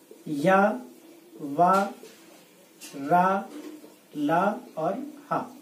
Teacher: ये आपके अंतस्थ व्यंजन है जो सघोष वर्ण कहलाते हैं, यानी इनके उच्चारण में कंपन उत्पन्न होता है।